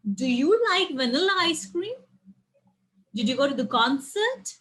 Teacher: there is a rising intonation in the end